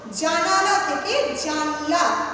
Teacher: শব্দের আদিতে যদি শাসাঘাত করে তাহলে শব্দের মধ্যবর্তী কোনো স্বর লুপ্ত হয়ে গেলে সেই প্রবণতাকে বলা হয় কি না মধ্য স্বরলোপ। এই মধ্য স্বরলোপের একটা উদাহরণ দেখো, মধ্য স্বরলোপ যেমন জানালা থেকে কি হচ্ছে, জানলা।